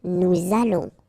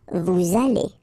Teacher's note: we'll make this little link between the two, what we call the liaison